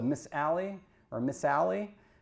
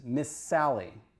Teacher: S is longer in the second one. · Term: geminate